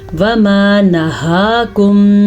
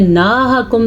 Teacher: ہا کھڑی زبر ہا اتنا لمبا کرتا ہے، نا کو لمبا نہیں کرنا. اگر آپ پڑھیں گے ناہاکم تو آپ تو بالکل غلط پڑھ لیں گے.